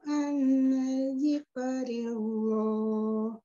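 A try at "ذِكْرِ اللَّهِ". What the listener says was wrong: Lafaz al-jalalah ketika sebelumnya dia kasroh dibacanya tipis ya. Zikrillah. Kaf sukunnya juga tidak dipantulkan. Bacanya gini, zikrillah gitu. Kerasa zikrillah tapi tidak zik, tapi zik.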